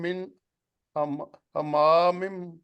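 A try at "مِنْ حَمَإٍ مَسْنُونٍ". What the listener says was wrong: नहीं हमा नहीं पड़ेगा।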